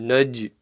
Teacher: little bounce, not so much that it becomes a fatha, but just like half of a fatha. So alam naj, not naj. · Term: qalqala